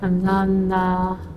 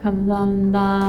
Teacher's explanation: Vowels can get really relaxed, and all you hear is na.